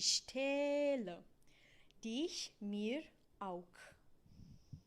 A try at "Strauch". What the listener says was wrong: Okay, so we have to deal here with the CH. I hear your CH like a K, and it needs to be, so we've got two words here, or three actually. Strauch. Strauch.